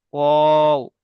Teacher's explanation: ওয়াও এর টানটা একটু বেশি হবে, যেহেতু ওয়াও তিন আলিফ টান হয়